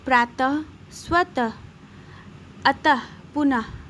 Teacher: तीसरा है विसर्ग, जिसे हम अह भी कहते हैं। इससे बोलने में ह की ध्वनि निकलती है।